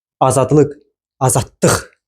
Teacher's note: Və bu anda başa düşmək olur ki, söz, sözdə vurğu sonuncu hecadadır. Yəni üçüncü hecadadır.